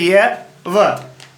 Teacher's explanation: संघर्षहीन, बिना कोई हवा के संघर्ष के सीधा निकल जाती है